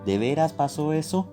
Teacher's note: se asciende el tono como en el Estado de México